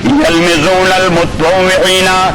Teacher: پھر اصل لفظ جو ہے متطوعین، تا کے اندر مدغم ہو گیا قرب مخرج کی وجہ سے